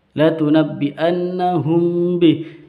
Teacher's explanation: mim sukun bertemu dengan ba itu bacaan ikhfa syafawi